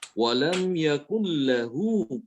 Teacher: tanpa guna atau dengung atau suara dari hidungnya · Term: Idgham bilagunnah